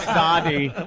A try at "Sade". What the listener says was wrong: You pronounce the E.